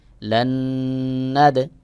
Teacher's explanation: এই নুন বাদ হয়ে যাবে পরের নুনকে যে ধরতে হবে